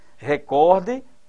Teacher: Olha a sílaba tônica cor